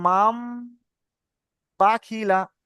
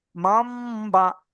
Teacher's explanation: নুন সাকিনের পরে যদি বা আসবে, তখন কি হবে? এই এই নুনটার পড়া হবে না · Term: ইকলাব